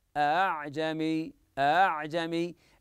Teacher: الهمزه الثانيه ينطقها بين الهمزه والالف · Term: يسهل الثانيه